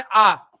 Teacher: दीर्घ स्वर होता है जैसे आ, यहाँ पे 2 मात्रा का समय लगता है